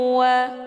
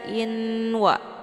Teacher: Hukum bacaan idgham bi gunnah, dibacanya sambil didengungkan.